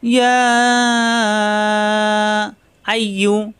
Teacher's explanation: ইয়া জিব্বার মাঝখানে উপরে তালুতে লাগবে, 3 আলিফ টান হবে।